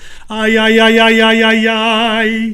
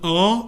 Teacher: an Italian R is deep, but it also has a kind of an E at the back of it. So it's ay, ay, ay, ay, ay, ay, ay, rather than R, it's ay, ay, ay, ay, ay, ay.